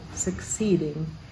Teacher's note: 19 the word suck seeding is three syllables long succeeding and the emphasis is on the middle syllable